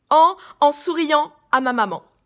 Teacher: on ouvre bien la bouche et les pommettes et l'air vient naturellement se placer dans le nez